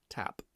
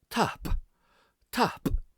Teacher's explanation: And listen as well to the difference of the P. In Gaelic we have a much more forceful, plosive P. So it's not tap, it's tap, tap.